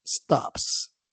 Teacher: stop, que termina en P, que es voiceless. Al agregarle la S, tendríamos entonces que esa S suena como la s del español